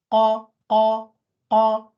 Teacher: Starting from the very back of the tongue is the qaf.